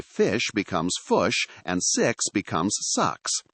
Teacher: New Zealanders are notorious for what linguists call centralizing their vowels. In simpler terms, they tend to move their I sounds toward a U or a schwa sound.